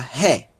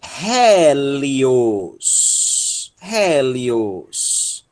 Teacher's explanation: Nós temos um eta, tem som de E aberto. E ela tem o acento também.